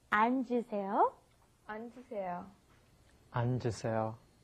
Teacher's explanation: Because it's got the double 받침 there. So you've got to go 안, and then the J sound comes up, 앉으세요